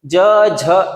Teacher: ज बोलते हैं फिर कंपन शुरू हो जाता है